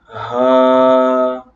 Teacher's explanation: اس کے بعد ہے ہا، یہ حروف حلقیہ میں سے ہے اور یہ حلق کے نیچے والے حصے سے ادا ہوتا ہے، یعنی کہ یہ بھاری بھی پڑا جائے گا اور یہ ہا سے نہیں ملے گا، ہا کی بالکل علیحدہ آواز ہے، اور ہا یہ بھاری آواز کے ساتھ حلق کے نیچے والے حصے سے ادا ہوگا